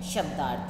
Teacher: शब्द प्लस अर्थ है, शब्द के द में अ और अर्थ का अ दोनों मिलकर क्या है, आ बन जाते हैं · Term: दीर्घ आ